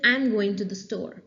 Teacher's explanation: I'm saying I'm going to the store there is no fall there is no rise of the pitch it's just a plain falling intonation